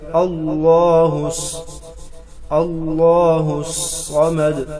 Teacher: صاد حروف مستعلیہ ہے اور مشدد بھی ہے، تو سختی کے ساتھ موٹا کر کے پڑھیں گے. اللہ الصمد دال حروف قلقلہ ہے، بحالات وقف قلقلہ ہوگا.